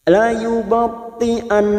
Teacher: Di sini terdapat huruf nun yang bertasdid dan dibaca waqaf, maka cara membunyikannya langsung didengungkan, bukan dipanjangkan. La yubti'an, bukan la yubti'an, bukan seperti itu, tetapi la yubti'an.